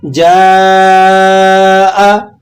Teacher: محل مد یعنی الف مدہ کے بعد سبب مد یعنی حمزہ اسی کلمے میں آ رہا ہے، تو آپ نے یہاں مد متصل، مد واجب ادا کرنی ہے۔